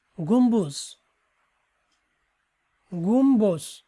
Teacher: ময়ে ব ফলার ব এর উচ্চারণ বহাল থাকে।